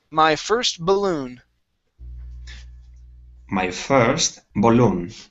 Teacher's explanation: Here we have the word balloon. The stress is at the very end.